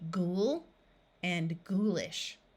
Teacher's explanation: the O and U will have the long oo sound which is the ooh of the word Moon